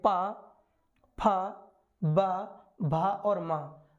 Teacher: होठों से पावर्ग के व्यंजन वर्णों का उच्चारण होता है · देखिए जरा, जैसे बोले पा, पा, जब हम पा बोले तो दोनों होंठ मिल रहे हैं, पा, फिर आता है फा, फा भी मिलता है, बा, बा, भा। तो इन पा वर्ग के व्यंजन वर्णों का जब उच्चारण करते तो हमारे होंठ दोनों मिलते हैं